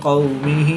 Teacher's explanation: واو ساکن سے پہلے قاف پر زبر ہے تو واو لین اس کو لمبا نہیں کریں گے۔